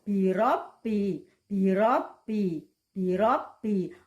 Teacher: Beda dengan ro pada kata birobi, birobi, birobi. Ro ini tempat keluarnya di ujung lidah tapi agak masuk ke dalam sedikit